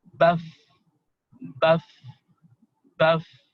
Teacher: Setelah itu contohnya yang pertama, misalnya huruf fa, jadi sebelum huruf fa itu huruf ba dengan harakat fathah ya gitu, dengan harakat fathah, maka dia harus fa-nya ini ya kan, fa-nya ini harus ada hamesnya, ada udara yang keluar, maka membaca dengan baf, baf, baf, bukan baf ya, bukan baf tapi baf gitu.